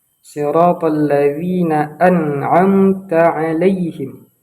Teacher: Kebanyakan orang menggunakan huruf zai. Namun yang harus kita gunakan di sini adalah huruf dzal di ujung lidah.